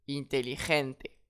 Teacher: Et j'accentue sur l'avant-dernier E.